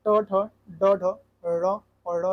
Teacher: ट वर्ग जो होता है मुर्धन्य व्यंजन है।